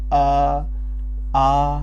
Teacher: स्वर में अ और आ ये होते हैं कंठ से उच्चरित